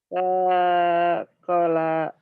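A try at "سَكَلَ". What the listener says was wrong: Pendek. Sakola. Nah, pendek. Sakola. Nggak ada yang panjang ujungnya.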